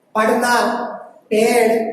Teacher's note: जैसे पढ़ना, पेड़, इनमें इन व्यंजनों का प्रयोग किया जाता है। द्विगुण व्यंजन कि वे व्यंजन जिनका उच्चारण करते समय हमारी जीभ झटके के साथ लुढ़के